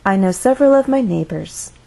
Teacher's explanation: we actually have to begin our sentence at a mid pitch